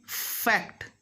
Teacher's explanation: Labiodental means the teeth and the lip will touch in case of F sound. But whereas people of Bengal, Orissa and some areas of Jharkhand as well, they make it bilabial, means the 2 lips will touch.